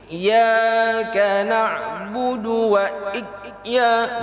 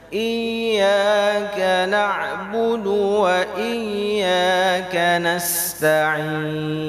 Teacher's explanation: huruf ya itu sifatnya rakhwah, dia harus mengalir, tidak boleh tertahan